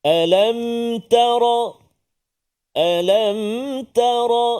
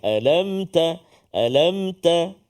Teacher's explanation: Tar alamwah itu yang pertama iaitulah Lam Mim bertemu dengan ta mim mati bertemu dengan ta maka kita Jelaskan bacaan supaya tak ada bunyi ataupun tak boleh dengunglah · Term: izhar syafawi